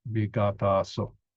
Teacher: one of the vowels, in this case, the preceding vowel is elided. Elided, that means not mentioned, so removed, vigat'āso.